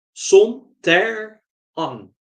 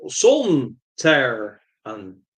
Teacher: I think that Kevin Lindsay insisted on pronouncing Sontaran by stressing the second syllable, Son, Ter, An, rather than using Robert Holmes' envisioned pronunciation, which stressed the first syllable, Son, Ter, An.